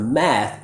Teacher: So the mistake I hear often is that students don't get enough open quality for this ah like bat vowel. Instead, they use a more closed position, so it sounds more like eh like bed